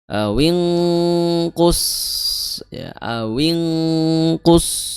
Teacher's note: Jadi ikhfanya tebal karena huruf ikhfanya memiliki sifat isti'la.